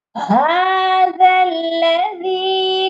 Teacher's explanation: ذال کو لام مشدد کے ساتھ ملائیں گے اور درمیان میں دونوں الف نہیں پڑھے جائیں گے